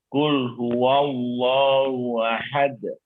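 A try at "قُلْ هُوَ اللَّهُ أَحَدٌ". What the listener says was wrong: Baik, barakallahu fiik. Seperti itu bacaan yang benar.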